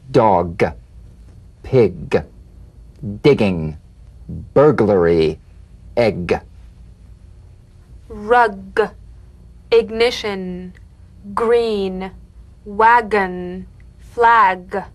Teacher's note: of the back of the mouth without tightening pressing or pushing you'll feel a crisp tap and a voiced pulsation of the back of the tongue